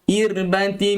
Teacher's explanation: Nipiskan ra di sini irbah kerana sebelum ra bagi bawah